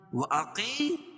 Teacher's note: قاف کو پر پڑھیں گے کیونکہ حروف مستعلیہ میں سے